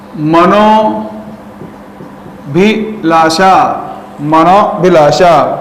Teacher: अ यहां पर कम हो गया और विसर्ग का क्या हो गया, ओ हो गया। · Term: विसर्ग का ओ